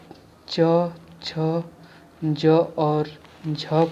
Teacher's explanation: च, छ, ज और झ को संघर्षी व्यंजन कहते हैं